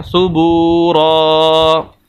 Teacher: واو مدہ آگے پیچھے بتا چکا ہوں اس کی ڈیٹیل کہ ہر وہ واو ساکن جس کے پچھلے حرف کے اوپر پیش آ جائے واو مدہ کہلاتی ہے، یہاں پر اس وجہ سے با کو لمبا کر رہے ہیں